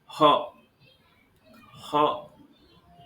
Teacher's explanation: ह का उच्चारण करते समय सर्वाधिक सक्रिय कौन सा अंग है कंठ तो कंठ उच्चारण स्थान हो गया